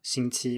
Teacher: that is the standard pronunciation in mainland China, 星 期 with 2 first tones